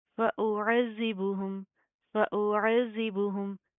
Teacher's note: زال کے اوپر تشدید ہے مضبوطی سے جما کر پڑھیں گے. اس کو آپ نے زا کی طرح سخت نہیں کرنا